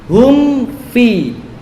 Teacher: Berhati-hatilah untuk mengikhfakan waw dan fa karena berdekatan makhrajnya dan karena makhrajnya sama pada huruf fa.